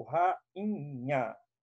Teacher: o I fica sozinho, ele é tônico